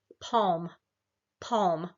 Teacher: you can feel the tongue comes down and low in your mouth and the resonance is kind of back in the back of